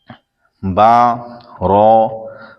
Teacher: با دونوں ہونٹوں کے تر حصے سے ادا ہوتا ہے اور را زبان کا کنارہ دانتوں کی جڑ کی تالو کی جانب سے ادا ہوتا ہے، یا پھر نئے مدنی قاعدے کا جو لکھا ہوا ہے اس میں یہ ہے زبان کی نوک اور مقابل کے تالو سے ادا ہوتا ہے۔